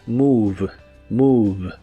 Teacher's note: La O se pronuncia como una U larga. La V o V chica como la conozcas es labiodental en inglés y la E del final es muda, así que se pronuncia move, move.